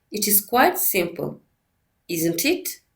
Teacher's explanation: The choice of tones in distinctive questions depends on the speaker's certainty of the fact expressed in the first sense group. First, the most common pattern for the disjunctive question is low fall in the first intonation group followed by the low rise in the tag question